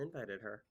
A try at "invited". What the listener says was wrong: So you did a stress on the first syllable of invited? Invited her?